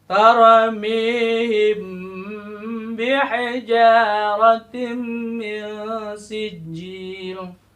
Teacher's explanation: huruf mim dan huruf ba dilebur disatukan, ya. Samar antara huruf mim dan ba, ya, karena mimnya disatukan dengan huruf ba, ya. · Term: ikhfa syafawi